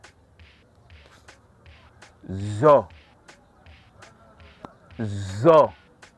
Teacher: Effectivement, j'ai encore senti des vibrations au niveau de la corde vocale. Ceci étant, le son zo est un son voisé.